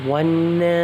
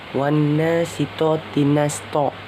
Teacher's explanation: Cara bacanya didengungkan serta ditahan 2-3 harakat sebelum menyebut jelas huruf nun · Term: gunnah